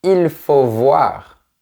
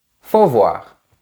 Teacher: Remarque aussi que généralement on ne prononce pas le sujet il. On ne dit pas il faut voir mais juste faut voir.